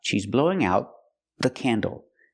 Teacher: When I say she's blowing out the candle, the T in out is a stop T. I stop the air. I put my tongue up.